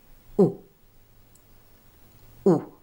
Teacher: Notice how my mouth is rounded like I'm blowing a kiss. And my tongue, which you can't see, is high with a hump towards the back of my mouth